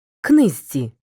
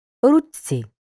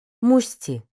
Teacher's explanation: шиплячі ж ч ш перед свистячими зь ц с завжди вимовляються як свистячі ж звучить як зь наприклад книзці ч стає ц руці ш